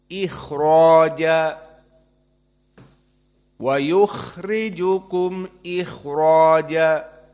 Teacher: Derajat yang paling rendah kha-nya sakinah sebelumnya kasrah.